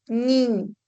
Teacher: El aire también se expulsa por la cavidad nasal. Son sonidos nasales.